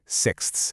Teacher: that KS-THS sound cluster at the end is a true phonetic gym workout